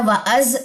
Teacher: زا میں سیٹی ڈالیے کیونکہ زا حروف صفیر میں سے ہے. واو کے اوپر کھڑا زبر 2 کاؤنٹس لمبا کریں.